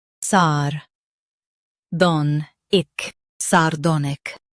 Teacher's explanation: Stress don and soften sar and ic.